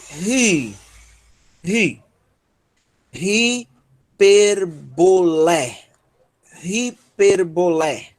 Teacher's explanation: a aspiração forte, altera o som da vogal